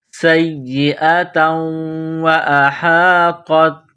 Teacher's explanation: سین میں سیٹی کی آواز، سین کو یا کے ساتھ ملانا ہے، یا کو دبانا ہے، یا میں سختی کرنی ہے۔